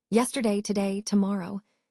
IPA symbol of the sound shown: ə